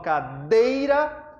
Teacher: Lembre-se disso, mais forte vogal. Quando eu falo cadeira, o E é mais forte, então o E é vogal. Consequentemente, as demais serão semivogais. O I, portanto, é uma semivogal. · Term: ditongo